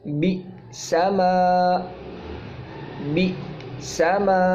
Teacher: جیسے قرآن پاک میں لفظ آتا ہے بی سما، یعنی بی سما، بازر بی کے بعد حمزہ ساکن ہے تو یہ تھوڑا سا جھٹکا دے کے پڑھا جاتا ہے.